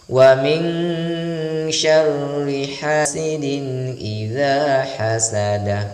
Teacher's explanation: bawah itu namanya tanwin atau kasratain bertemu dengan huruf hamzah maka harus dibaca jelas atau izhar tidak boleh didengungkan tapi harus dibaca dengan jelas